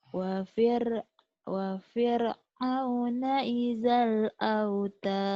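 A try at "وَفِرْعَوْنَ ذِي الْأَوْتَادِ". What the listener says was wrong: Kok idal? Wa fir'auna dzil. Idal dari mana? Wa fir'auna dzil autad.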